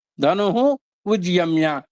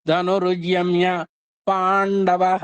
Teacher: ఆ విసర్గలు 'ర' శబ్దంగా మారాయి